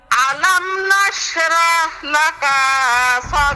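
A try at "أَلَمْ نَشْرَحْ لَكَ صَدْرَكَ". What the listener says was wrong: লাকা লাকা লাকার মধ্যে টান আছে। লাকা সাদরাক।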